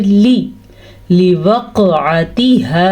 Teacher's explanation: لوقعتها، لام کو لمبا نہیں کرنا کیونکہ لام زیر لی ہے